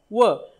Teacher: दंत आणि ओष्ठ यांच्या सहाय्याने उच्चार होणार वर्ण कोणता एकच आहे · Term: दंतोष्ठ्य